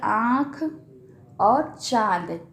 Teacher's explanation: उच्चारण में हवा और मुख और नाक दोनों से निकलती है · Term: चंद्रबिंदु